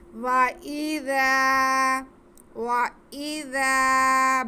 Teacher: وَإِذَا خَلَوْا, واو پہ زبر, حمزہ کے نیچے زیر اور ذال کے ساتھ وہی الف مدہ, تو ذال کو نرمی سے پڑھتے ہوئے ہم کھینچ کے پڑھ لیں گے